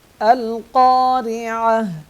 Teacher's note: وقف کی صورت میں یہ تا جو ہے ہا بن جائے گا۔ القارعہ، اور اگلی آیات کے ساتھ اگر اس کو ملائیں گے تو تا کے اوپر پیش پڑھا جائے گا، یہ ہا نہیں پڑھا جائے گا۔